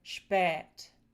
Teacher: first we have the long eh which would produce words like spät. And that's the traditional way of pronouncing it. A lot of people still pronounce it like that.